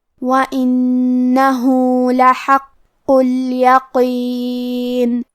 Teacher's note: کلمت لحق میں حرف القاف پہ تشدید ہے، لہذا ہم 2 حرف کے برابر قاف کو پڑھیں گے اور یہ حرف کو موٹی آواز میں بھی پڑھیں گے